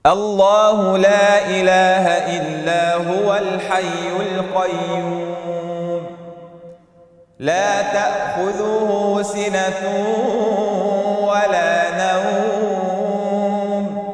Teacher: الامام ابن كثير له قصر المد المنفصل يقرا بقصر حركتين فقط